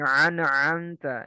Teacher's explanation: Seperti orang mengucapkan hamzah terlalu ditekan sehingga mirip orang yang mutah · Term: takalluf